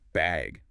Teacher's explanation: they might ask, do you need a bag or even just bag with a rising tone